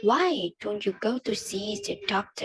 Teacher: In this case, the pitch goes up at the beginning and gradually down at the end.